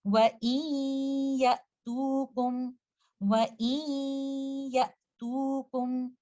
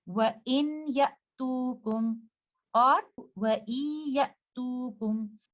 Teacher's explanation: you will merge the gunna of letter nun sakina with letter ya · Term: idgham naqis